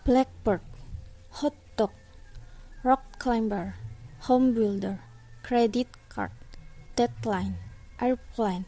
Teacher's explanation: the compound stress role in english size of two part compounds of the two elements the first is the most prominent